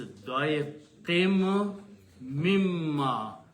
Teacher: So there is a noon changes into mim, and also there becomes the gunna sound in it. · But there is a min after that, so its sound changes to mim, not noon anymore